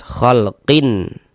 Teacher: Nah, karena dia izhar maka dibaca jelas. Jadi bunyi tanwinnya dibaca jelas. Khalqin kemudian tidak didengungkan pendek saja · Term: izhar halqi